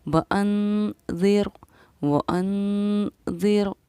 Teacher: نون ساکن کے بعد حروف اخفا میں سے ذال آ رہا ہے، اس لیے ہم نے اس پر ٹھہراؤ کیا، اخفا کیا